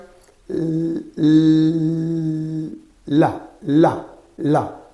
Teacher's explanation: this air is blocked but the air is passing from the sides of the tongue · So here the air is blocked in the center of the mouth, one point, and it flows around the sides of the tongue. So that's why that's called, this L is called lateral approximant. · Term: lateral approximate